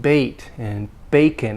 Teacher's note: it's long a because it's a glide a